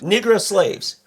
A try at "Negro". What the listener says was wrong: It's an A instead of an O.